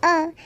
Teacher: इसे जीभ के मध्य भाग से बोला जाता है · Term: मध्य स्वर